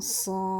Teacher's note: So an ikhfa means you have to hide the nun sound of the ain with the gunna, that is having the nasal sound, and then pronounce the sad. And then the end of the sad, the word sad, it ends with the dal, so it has the qalqala on it